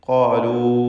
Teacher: ഖാഫിനും അതിൻ്റെ ദീർഘാക്ഷരമായ അലിഫിനും തഫ്ഖീമാണ്